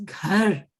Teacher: थोड़ा सा ब्रेथ ज्यादा उसमें लगना है, उस थोड़ा चेस्ट से आएगा